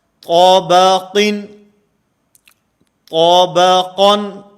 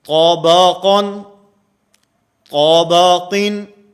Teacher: قا بھی موٹا ہے، آخر میں قاف بھی موٹا ہے، اور درمیان میں با جو ہے یہ باریک ہے